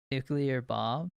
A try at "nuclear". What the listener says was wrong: Is that how you would normally say it? nuclear. There's no U there. It's nuclear. Everyone says nuclear and it's wrong.